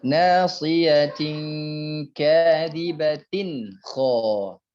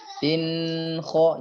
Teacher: Ini kalau tanwin bertemu dengan kho, dia memang berdengung tapi dengungnya naqis, dengungnya kurang. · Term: gunnah yang naqis